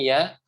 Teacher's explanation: Tengah lidah bertemu dengan langit-langit Tengah atas tapi ini agak dibuka lebih lebar lagi dibanding huruf syin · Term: huruf ya